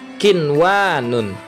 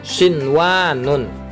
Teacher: nun mati bertemu waw, itu berkumpul dalam satu kalimat, maka juga harus dibaca jelas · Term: idhar